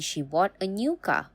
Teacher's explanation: with stress and pitch rise on car